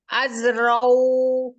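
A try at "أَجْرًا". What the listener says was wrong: Jim jaji ju jeje aja ajraw Kebacanya zai az. Kolkola dia mantul. Jim itu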